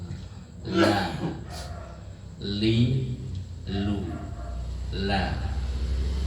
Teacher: La ujung lidah, tepi ujung lidah sampai ke tepinya bertemu dengan langit-langit atas bagian depan.